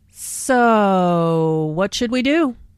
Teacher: notice how the O sound is drawn out here, combined with the intonation which shows boredom.